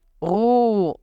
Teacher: em vez de falar ó Eu falo o Ou seja a a vogal é longa e é o com a boquinha mais fechada